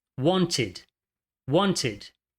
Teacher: Want. Want termina com o som de T, adiciona a sílaba ed.